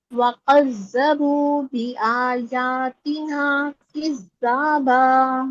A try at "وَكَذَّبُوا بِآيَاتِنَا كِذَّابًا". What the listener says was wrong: ये वाला काफ बहुत जोर से कड़क सा पढ़ा है आप, ये वाला अच्छा पढ़ा है दूसरा वाला। वकज़्ज़बू बिआयातिना किज़्ज़ाबा।